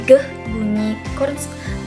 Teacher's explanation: Dorsovelar adalah bunyi konsonan yang dihasilkan dari pangkal lidah yang menempel pada langit-langit lunak, yaitu contohnya pertama yaitu konsonan g, bunyi dorsovelar hambat bersuara. Karena bunyinya ini dihasilkan dengan penghentian aliran udara dan kemudian melepaskannya secara tiba-tiba.